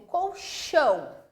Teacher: o chão é a sílaba tônica